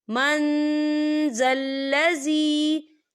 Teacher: यहाँ देखिए, मन, यहाँ नून साकिन है और नून साकिन के बाद जो है जाल आ रहा है, और जाल जो है इक्फा का वर्ड है, तो हम यहाँ इक्फा करेंगे, नून साकिन की आवाज़ को नाक में छुपाएंगे